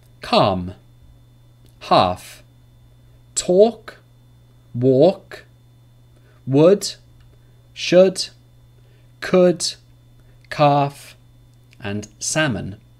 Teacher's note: vowels a oh and you a own you there's no L sound after these vowels